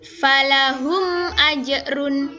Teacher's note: bunyi mim sukun dibaca jelas dan bibir tertutup